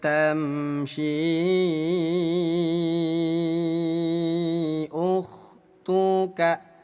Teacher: bunyi syi yang ada benderanya kita panjangkan selama lima harakat